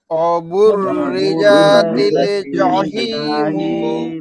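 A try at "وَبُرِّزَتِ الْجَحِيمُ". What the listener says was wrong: অবুররিজা টান হয়ে গেছে, ঠিক আছে না মন ভাই, টান হয় নাই? হ্যাঁ টান হয়েছে। আবার বলেন তো অবুররিজাতিল জাহিমু।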